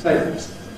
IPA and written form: ˈteɪboz (tables)